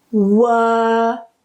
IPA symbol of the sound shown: ɜː